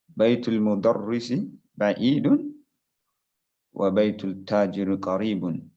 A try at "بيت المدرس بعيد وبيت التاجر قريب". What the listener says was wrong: Baitu Tajiri Karibun. We cannot skip the haraka. Baitu Tajiri.